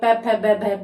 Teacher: बिना होठों के प वर्ग का उच्चारण संभव नहीं है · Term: ओष्ठ्य